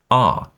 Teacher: Basically, all that means is that there's a certain set of words that have the A sound or the short A sound as in apple, that in British RP actually take the long A sound like in father